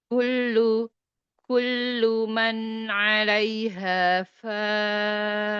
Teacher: Kullu tipis lamnya. Ini kaf juga tipis. Ditipiskan semua.